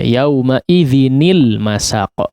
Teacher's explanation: Yauma idzin ya, aslinya yauma idzin al masaq ya. Karena dua sukun tidak mungkin diucapkan ya begitu saja, maka dikalahkan salah satunya, dihidupkan ya, dihidupkan menjadi kasrah. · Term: dikasrohkan